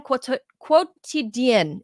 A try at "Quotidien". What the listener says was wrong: Quotidien. You do not pronounce the U. It's as if it's just quotidien.